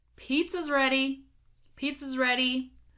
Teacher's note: here we're focusing on contractions where the is becomes a z